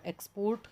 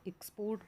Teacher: तो जो बोलने का तरीका है हमारा, एक्सपोर्ट बोल रहे हैं तो नाउन है, एक्सपोर्ट बोल रहे हैं तो वर्ब है। क्योंकि यहाँ पर हमने एक्स पे जब जोर दिया तो वो नाउन है और पोर्ट पर जब हमने ज़ोर दे के बोला तो वो वर्ब है